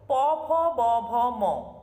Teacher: উপরের অষ্ঠ এবং নিচের অষ্ঠ একে অপরকে স্পর্শ করছে অর্থাৎ দুটি অষ্ঠের পরস্পরের স্পর্শজনিত প্রয়াসে এই ব্যঞ্জন ধ্বনিগুলি উচ্চারিত হচ্ছে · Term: অষ্ঠ ব্যঞ্জন, ওষ্ঠ ব্যঞ্জন